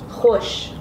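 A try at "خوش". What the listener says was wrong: Kush. You don't say khe.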